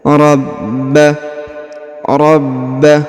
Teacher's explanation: huruf ba ditahan dan ditekan karena pada huruf ba di atasnya terdapat tanda tasdid atau penekanan